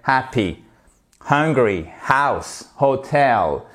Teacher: Deuxième faute qui trahit le fait qu'on ait une prononciation défaillante en anglais, c'est le H. Il est muet en français, il est aspiré en anglais dans tous les mots qui commencent par un H. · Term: H aspiré